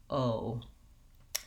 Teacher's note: technically in english o is a diphthong kind of two sounds holding it longer and relaxing your jaw as you go oh